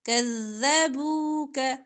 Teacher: كَذَّبُوكَ إن کا نون ساکن کے بعد قاف اخفا فَإِن كَذَّبُوكَ ذال باریک نرمی سے